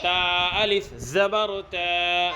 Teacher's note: الف مدہ کو ایک الف کے برابر کھینچ کر پڑھیں گے